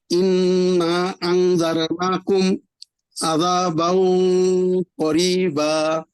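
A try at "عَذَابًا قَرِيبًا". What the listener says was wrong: বাও, আমাদের গুন্নাটা মোটা করে ফেলতে হবে।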